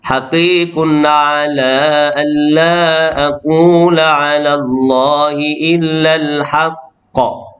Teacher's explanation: Beliau menggunakan bacaan 2 harakat pada mat jaiz. Mat wajib tetap 4 atau 5, mat jaiz saja.